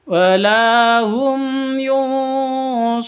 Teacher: mim mati bertemu dengan Ya jelas bacanya karena izhar syafawi